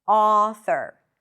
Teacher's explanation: back of the tongue is raised a little bit. The lips are slightly rounded.